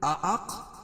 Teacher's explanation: قَالَ قاف کو پر پڑھیں گے، اَأَق حمزہ دونوں جگہ دونوں کو الگ الگ کر کے پڑھیں گے. اَأَق قاف پر قلقلہ اور را کو پر پڑھیں گے.